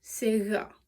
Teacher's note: you would put your mouth and your tongue in the same position as you when you're saying a G, G. But it's a little bit softer because it's fricative. So instead of G, it's G. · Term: fricative G